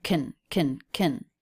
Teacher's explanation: The word can reduced to the schwa n.